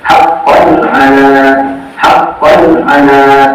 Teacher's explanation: huruf-huruf idhar di sini makhrajnya adalah dari tenggorokan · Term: idhar halqi